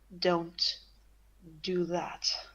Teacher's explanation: she's throaty and guttural, and there seems to be like more layers to her voice.